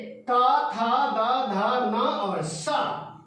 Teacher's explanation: ये ता बोलते हैं तो हमारी जुबान ठीक ऊपर वाले जो दांत है ना उनको छूती है, वहीं से इन सभी अक्षरों का शुद्ध उच्चारण होता है और ये स भी वहीं से उच्चारित होता है। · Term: दंत्य वर्ण